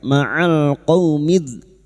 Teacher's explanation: Ma'al qaumidz, fathah bertemu wawu sukun kita lunakkan huruf lin. Qaumidz, masuk pada alif lam syamsiyah atau idgham syamsiyah lam ta'rif yang bertemu dha